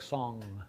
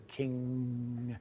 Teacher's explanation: We're making a velar nasal.